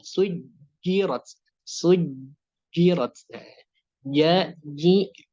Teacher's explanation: tidak ada hembusan nafas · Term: jahr